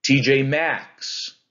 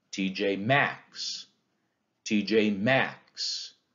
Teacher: it's two unstressed syllables t j and then the stress syllable max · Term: anapest